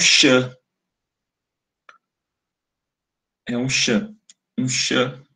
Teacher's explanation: Não é sã, tem frequências muito mais agudas. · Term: ruído